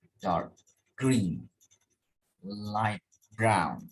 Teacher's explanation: Both parts of compound adjective are stressed. Stronger stress, stronger stress usually falls on the second component of two words compound adjective